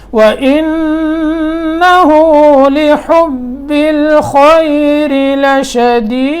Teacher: لِحُبِّ الْخَيْرِ حا صاف، اور آگے اسی طرح لشدید دال میں قلقلہ